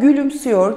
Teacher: e sesinin ü sesine daralarak dönüştüğünü görmem mümkün